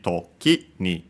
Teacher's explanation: by adding ni, we actually can hear it toki ni, low, high, low. Otherwise, if we don't add anything, it sounds the same as an unaccented word.